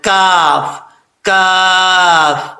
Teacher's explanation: اس کا مخرج زبان کی جڑ اوپر والے تالو کے سخت حصے سے لگے تو کاف پڑھا جاتا ہے